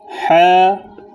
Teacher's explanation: হা যখন উচ্চারণ করবেন তখন নিজের গলার মধ্যে আওয়াজ দিবেন, শক্ত করে গলার মধ্যখান থেকে আসবে, যেহেতু গলার দিকে চাপ দিলে, আওয়াজে চাপ দিলে তখন হা আসবে, নতুবা হা হয়ে যাবে।